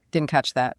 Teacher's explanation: That glottal stop is a perfect example of why shadowing is so vital. A textbook will never teach you to swallow that T sound.